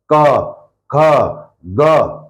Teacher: कहां से आवाज निकल रही है सीधी गले से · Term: कंठ